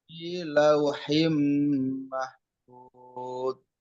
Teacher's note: Itu idgham biguna ya. Ditukar dengan dengung.